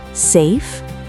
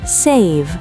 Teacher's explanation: The vibration is at the end. Don't drop it.